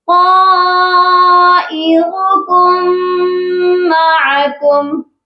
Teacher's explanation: یہاں پر بھی دیکھیے کم دو میم اکٹھے ہیں تو ہم نے فرسٹ والے میم کو نہیں پڑھنا، یہ پڑھا جائے گا طائركم معكم. جب ہم کاف کو میم مشدد کے ساتھ ملائیں گے تو غنہ بھی لازمی کریں گے